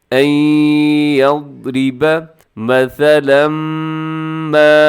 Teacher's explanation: جو لکھا ہوا ہے ثا، اس میں سیٹی نہ ہو